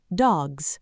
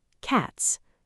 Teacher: You'll feel a vibration. That's the z sound. Now say cats. No vibration. That's s.